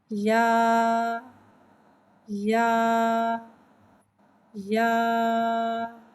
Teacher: या को एक अलिफ यानी 2 हरकत के बराबर खींच के पढ़ते हैं। या हुर्फ़े शजरिया है, ज़बान के दरमियान और तालु के दरमियान से अदा होता है।